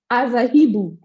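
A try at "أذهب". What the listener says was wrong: Not Aza. No, not Aza. Azhibu. A-I-U. A-I-U. That's the sound of the present tense vowels. Az-hi-bu.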